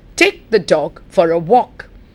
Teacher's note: what are the important words take dog walk not the not for